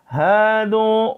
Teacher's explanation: हा को आवाज़ सीने से निकालनी है